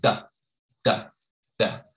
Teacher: So there's no puff of air. So pronounce it like a T, but don't add that air.